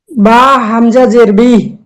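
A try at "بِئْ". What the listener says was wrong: আচ্ছা, এখানে একটু উচ্চারণটা একটু অন্যরকম হবে, বা এই হামজা শক্ত হবে এবং উচ্চারণটা খুব অল্প সময়ের মধ্যে হবে। বা হামজা জের বি।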